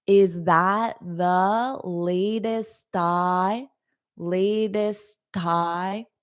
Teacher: So, I can connect them a little bit. And you might hear a little bit of a tie, a T sound before the I. Is that the latest tie?